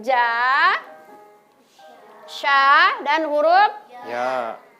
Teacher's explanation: huruf yang keluar dari tengah lidah itu adalah huruf ja atau huruf jim, huruf sya, dan huruf ya